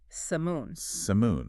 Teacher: Stress on the first syllable, Sam, and that O is reduced, kind of like an sound again.